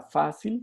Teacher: más o menos tiene la fuerza en la grave